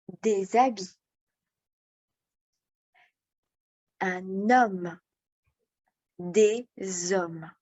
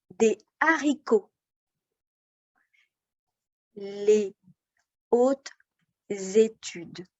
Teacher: le h est muet je fais la liaison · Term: H muet